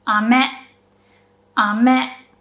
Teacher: The first syllable, is pronounced with a low pitch. And then it goes up.